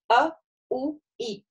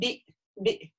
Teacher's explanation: это читается как такой взрывной звук, в зависимости от огласовки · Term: хамза